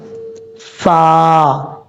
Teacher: اوپر والے جو دو دانت ہیں ان کا نیچے والا کنارہ نیچے والے ہونٹوں کی تری والی جگہ پہ لگے گا تو فا پڑھا جائے گا۔ فا، کچھ لوگ پڑھتے ہیں فا، فا ہونٹ گول کر کے پڑھنا، ایسا نہیں پڑھنا۔